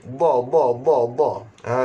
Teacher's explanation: huruf dad, mesti lidah kena duduk tepi